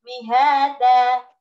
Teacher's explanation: Mihadan dibaca mihada, namanya mad iwad. Dan ini hanya 2 harokat saja. Enggak boleh lebih.